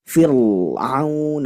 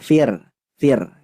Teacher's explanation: huruf ro ketika sebelumnya kasrah maka hukumnya tarkik dibacanya tidak boleh dibaca tebal tidak boleh firun engak boleh bacanya cukup tipis saja Fir Fir